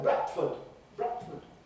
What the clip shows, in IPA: ˈbrætfəd